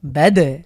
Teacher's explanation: লক্ষ্য করছেন এখানে আমরা ধাক্কা দিয়ে পড়লাম, কারণ হলো এখানে দালের উপরে সুকুন হয়েছে। আমরা জানি কফ, ত, বা, জিম, দাল, এই 5টাকে বলা হয় কলকলার হরফ।